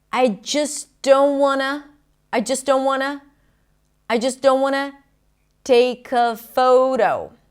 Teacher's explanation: The T is also dropped between the don't and the want, right? The T after an N, when it's unstressed, in this case in a function word, is often dropped.